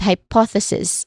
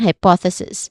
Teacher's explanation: There are four syllables. All in all, the stress is on the second syllable. But we start on the first syllable high, which has a clear I dip thong sound.